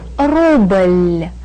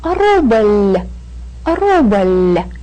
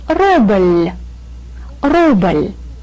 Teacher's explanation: Ruble ends in a very light, very soft L sound. And to show that this L gives us a very light and soft sound, we put the soft sign on this word.